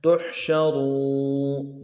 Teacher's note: شین کی جو شین ہے اس کو واضح کریں گے تفشیہ، را کو واو کے ساتھ ملانا ہے، وہ موٹا کریں گے، واو مدہ بھی ہے، تحشرون، نون کو نرم سے ادا کریں گے، تحشرون۔